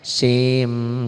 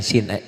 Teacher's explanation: Sin, N-nya masuk ke M. Sim, jangan sin, ujungnya jangan N lagi. Sim, bibirnya dikatup. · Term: idgham